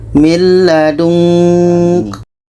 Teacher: Ketika kita baca nun, kita sudah merasakan huruf ka. Maka seperti ada bunyi eng.